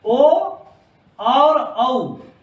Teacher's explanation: ओ और औ, हम इनको कंठ और ओष्ठ से बोलते हैं। देखिए अ से और ऊ से, अ और ऊ से मिलके ओ बनता है, तो अ का तो हो गया उच्चारण स्थान कंठ और ऊ का हो गया ओष्ठ, इसलिए कंठ और ओष्ठ से बोलते हैं।